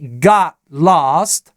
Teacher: Т плюс другой согласный на стыке слов в такой позиции в английском языке Т, как правило, замещается на гортанную смычку, на маленькую паузу.